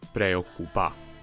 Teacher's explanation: The stress stays on the final vowel, in this case the a, which helps distinguish it from the third person singular.